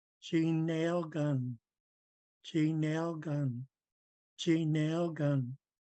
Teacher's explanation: we have to have that g in there to remind us that's the NG blend and it's going to be nasal